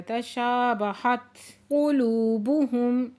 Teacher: لو پہ واو مدہ ہے دو حرکت کھینچ کے پڑھیں گے، میم ساکن پہ اظہار شفوی ہو رہا ہے · تا ساکن ہے یہاں پہ ہمس ہو رہا ہے، تشابہت قلوبہم لو پہ واو مدہ ہے دو حرکت کھینچ کے پڑھیں گے